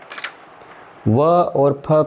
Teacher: व और फ का उच्चारण स्थान दंतोष्ठ है